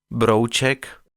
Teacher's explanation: Le tchèque prend sa revanche avec une diphtongue, O, qui n'est ni le AO de Brown, ni le O de broken en anglais, mais le O de, Brouček, c'est-à-dire un son qui se dirige vers la quasi-postérieure préfermée O en partant d'un O bien ouvert